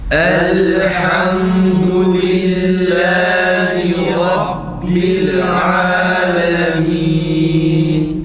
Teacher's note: dal harfinde dudak önde U sesi tam net çıksın ve ha ince harf olduğu için elhamdu değil.